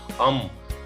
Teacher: ಅಂಗಗಳ ಸಹಾಯದಿಂದ ಈ ಅಕ್ಷರ ಹೊರ ಬೀರ್ತಾ ಇದೆ ನೋಡಿ ಅಂ ನಾಲಿಗೆಯಿಂದಲೂ ಕೂಡ ಮೂಗಿನಿಂದನು ಕೂಡ ಈ ಧ್ವನಿ ಅಂದ್ರೆ ಆ ಉಸಿರು ಹೊರಗೆ ಬರ್ತಾ ಇದೆ ಜೊತೆಗೆ ತುಟಿನು ಕೂಡ ಸ್ಪರ್ಶ ಆಗ್ತಾ ಇದೆ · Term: ಅನುಸ್ವಾರ